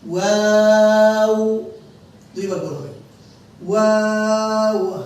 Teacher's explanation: ওয়াওয়ের বেলা ঠোঁটটা গোল হবে দুইবার